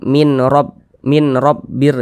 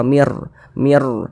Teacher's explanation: Bunyi nun sukun disisipkan ke dalam huruf ro. Kami membacanya sebagai mir. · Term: idgham bila ghunah